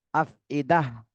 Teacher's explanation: যেহেতু ওয়াকফের চিহ্ন রয়েছে এখানে, এজন্য আমরা এই গোল তাটা হা পড়বো আর এখানে জজম দিয়ে পড়তে হবে